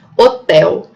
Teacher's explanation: o L, que é com som de U no final da palavra